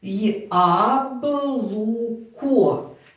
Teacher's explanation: коли буква я стоїть на початку слова вона розкладається на два звуки й а